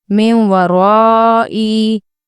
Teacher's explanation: इसकी हिज्जे ऐसी होगी मीम नून वाव ज़ेर मिन, वाव ज़बर वा, रॉ अलिफ ज़बर रॉ, हमज़ा ज़ेर ई, मिन वराई। गुन्ना करने के लिए आवाज़ नाक में जाएगी और होंठ यूज होंगे वाव के मखरज को निकालने के लिए